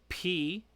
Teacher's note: your two lips like the b are coming together and stopping the air and letting it out